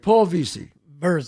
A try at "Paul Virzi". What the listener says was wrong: I know it's pronounced like it would be an e but it's an i